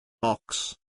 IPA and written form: ɒks (Ox)